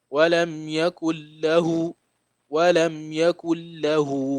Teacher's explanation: So you don't pronounce the gunna here because of the lam rule in nunation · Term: idgham rule